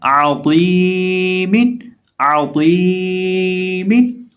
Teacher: عین کو حلق کے درمیان سے ادا کریں گے